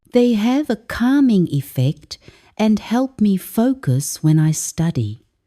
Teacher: sentence stress is on meaningful words like acoustic music and calming effect